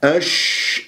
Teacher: ركز لي على وسط اللسان والتفشي داخل الفم مو بالشفاه